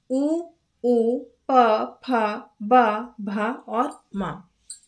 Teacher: जब बोलते समय दोनों होठ मिलते हैं तब जो वर्ण निकलते हैं ओष्ठ वर्ण कहलाते हैं। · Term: औष्ठ वर्ण